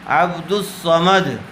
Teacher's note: تو اب یہاں دال کو ڈائریکٹ صاد سے ملائیں گے، لام سے نہیں ملائیں گے۔ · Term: حروف شمسی